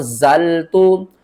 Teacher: نون ساکن کے بعد حروف اخفا میں سے زا ہے تو نون کی آواز کو ہم چھپا کر پڑھیں گے